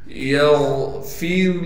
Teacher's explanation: या को गैन से मिला देंगे इसलिए कि गैन साकिन है और गैन को मोटा करके पढ़ेंगे